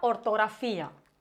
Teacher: la vocal tónica, la que recibe mayor fuerza de intensidad, es la I, por tanto forma un hiato. Si lo dividimos en sílabas sería ortografía, con acento en la I, con independencia de lo que marque en la regla general de acentuación.